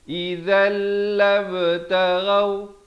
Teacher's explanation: Baru sempurna 2 dan masuk kepada kama yaquluna idzal. Di sini idgham bila gunnah, tanwin bertemu lam. Asalnya idzan jadi idzal.